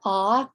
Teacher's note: your mouth is as open as it's going to get and it's rounded